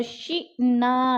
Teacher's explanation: نا پہ پھر الف مدہ ہے، اس کو بھی ہم نے لمبا کر کے پڑھنا ہے